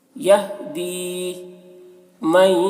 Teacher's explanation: نون ساکن کے بعد جب یا ہو تو نون کو یا سے ملا کر غنہ کے ساتھ پڑھتے ہیں، اس کو ادغام ناقص کہتے ہیں